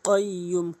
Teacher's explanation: কফটা জিব্বার গোড়া উপরে তালু থেকে